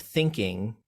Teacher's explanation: you hear how think is higher in pitch than the ing. So we don't pronounce it thinking, we pronounce it thinking. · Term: strong, weak